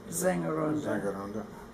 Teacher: when the S is the first letter, it sounds more like an English Z